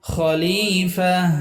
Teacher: খলি লামের এক আলিফ টান